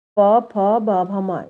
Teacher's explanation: होठ सांस को रोकते हैं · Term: ओष्ठ व्यंजन